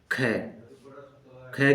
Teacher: ख बोलते हैं तो ज्यादा फोर्स लगता है तो ख महाप्राण हो गया